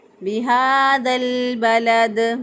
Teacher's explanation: ذال جو ہے اس کو لام کے ساتھ ملا دیا، کیونکہ جو ساکن حرف ہوتا ہے وہ پیچھے والے زبر زیر پیش والے حرف کے ساتھ ملنا چاہتا ہے، تو الف کے ان دونوں الف کے اوپر کوئی حرکت نہیں، لہذا لام ساکن کو ذال کے ساتھ ملا دیا، بِهَذَا الْبَلَدِ۔